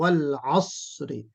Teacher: अस्र में हमजा नहीं बल्कि आइन होना चाहिए